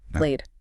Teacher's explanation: Right, that Y sound, E, its voice, your vocal cords are buzzing, so the ed takes on that voice. It's a soft D sound.